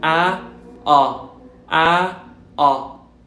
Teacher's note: Fíjense como bajo la lengua y hago la boca un poco más redonda.